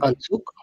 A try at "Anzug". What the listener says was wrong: you don't say Ansuk now.